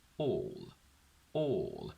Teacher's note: if I say the word all on its own, we have a dark L